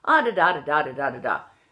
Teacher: Southern Ireland or the Republic of Ireland tends to go down